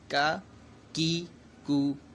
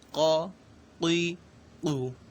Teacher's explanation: کاف جو ہے ڈنڈی والا اس کو باریک پڑھا جائے گا، جبکہ دو نقطوں والا قوف اس کو پر پڑھنا ہے کیونکہ یہ حروف مستعلیہ میں سے، تو فرق اس طریقے سے کیا جائے گا۔